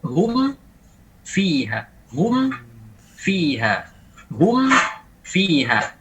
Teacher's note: At-tasadum, ingat at-tasadum. Caranya mim ini terucapkan memang harus at-tasadum, terkatup bibir. · Hanya separuh di bibir, separuh di khaysyum. Separuh bagian bibirnya an-nisful mukammal baru disempurnakan oleh yang bagian an-nisful mukammil dari bagian hidung.